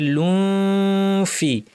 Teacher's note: জাইলুম ফি, তানউইনের পরে ফা আছে, দাঁতকে ঠোঁটের উপর এনে ফা বলার জন্য মুখ রেডি এবং নাক থেকে গুন্না করে বলতে হবে